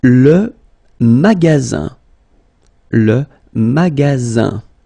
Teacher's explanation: you've got only one S between two vowels. Then you get the sound Z, alright? And then the ending here is IN, so it's nasal, goes in your nose, and it's un.